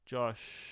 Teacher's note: That sh sound actually does not produce much air, right? If you put it to your lips, you don't feel much air on your finger. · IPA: /ʃ/